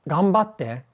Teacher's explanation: So in a word like do your best, like ganbatte, it becomes an M because the sound that follows it is a B. And the nasal version of a B is an M.